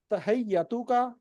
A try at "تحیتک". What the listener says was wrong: حیہ تو نہیں، تحیہ ہا کے نیچے زیر ہے.